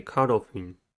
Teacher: Caudal has 2 syllables and the stress is at the first one. The first syllable is caud.